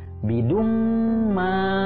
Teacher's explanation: Jadi dibacanya idgom biguna ya jadi ditahan dulu dua harakat dengan guna